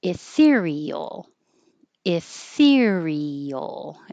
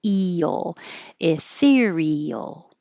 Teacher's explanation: It's not very often that the two vowels next to each other are in separate syllables, but we hear these separately.